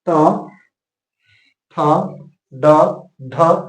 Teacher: आपका जीभ मुर्धा की तरफ जाता है